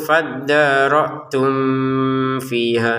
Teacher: mim sukunnya bertemu fa ya di sini sama dengan mim sukun bertemu nun dibaca dengan jelas. Jangan dibaca dengung.